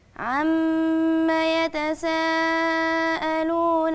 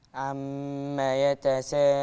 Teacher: مد متصل الواجب اربع حركات